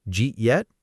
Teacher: That's actually Did you eat yet? all squeezed into two quick syllables.